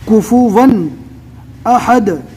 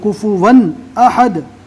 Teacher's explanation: ون دو زبر کی تنوین ہے، آپ اچھے سے سن سکتے ہیں کہ پیچھے جزم والے نون کی آواز آتی ہے